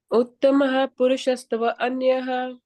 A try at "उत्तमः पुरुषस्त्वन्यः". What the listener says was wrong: So this is, don't separate this. Tvanyaha. Purushastvanyah. Uttama Purushastvanyah.